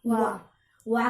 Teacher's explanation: दांत और ओठ दोनों की ही सहायता से लिखा और बोला जाता है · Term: दंतोष्ठम